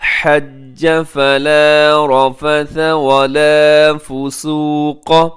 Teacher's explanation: رفث میں بھی را موٹا ہے، ثا میں خیال کیجیے گا اس میں سیٹی نہ ہو